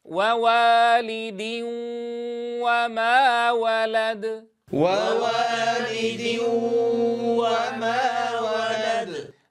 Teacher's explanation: نبدأ ابتداء بضم الشفتين الذي هو مخرج الواو، ثم نفتح الفم للإتيان بحركة الفتحة هكذا. لاحظوا ضم ثم الإتيان بحركة الفتحة.